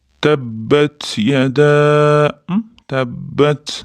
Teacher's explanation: Yada deganda mad munfasil kelayotganlik uchun ya'ni mad harfi hamza bilan yo'l qyganligi uchun toʻrt harakat cho'ziladi. Barmogʻimizda bir ikki uch to deb sanab cho'zamiz.